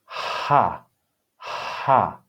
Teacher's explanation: This is simply a breath. It's simply aspiration or breath.